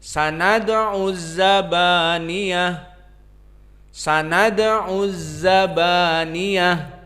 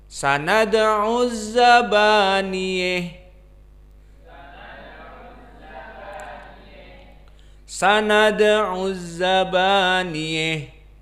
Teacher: Maknanya fathah di sini tidak ada al-imalah, la sughra wala kubra. · Dia spesifik ha at-ta'nis dibaca dengan al-imalah al-kubra. Maka pembacaannya mendekati kepada kasrah.